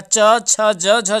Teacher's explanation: तो आपका कौन सा हो जाएगा देखिए आपका तालव्य से, तो आपका ऑप्शन नंबर ए जो है हो जाएगा, च छ ज झ जो है आप लोगों का तालु से बोला जाता है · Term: तालव्य व्यंजन